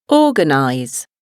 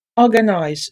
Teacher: The first syllable is under the stress.